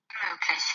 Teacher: Analysis is on the word Gesellschaft. So Gesellschaft has an inseparable prefix ge that is unstressed, the suffix schaft that puts the stress on the second last syllable.